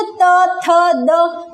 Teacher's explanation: हमारी जो जीवा होती है वो दांत से टकराती है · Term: दंत्य वर्ण